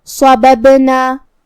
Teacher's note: یہاں با کا حکم ہے قلقلہ. قلقلہ کا معنی ہے حرف ساکن کو ہلانا، لہذا ہم با کو ہلاتے ہوئے یہ کلمہ کو ادا کریں گے